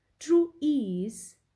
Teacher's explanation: true is unstressed and ease is stressed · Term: iambic